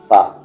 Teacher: आपके जो ऊपर के दांत हैं उसको आप नीचे के लिप्स में टच करें फ ठीक है वहां से फा निकलता है फिराक में खूब